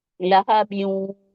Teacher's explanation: لام پہ فتح ہے، ہا پہ فتح ہے، اس کو جلدی سے پڑھیں گے، اور با، با کو واو سے ملائیں گے، اور ادغام ہوگا تو غنہ کے ساتھ، نزل ساؤنڈ کے ساتھ، تھوڑی سی نزل ساؤنڈ کے ساتھ